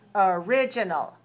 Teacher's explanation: If you say the adjective original, that's stressed on the second one.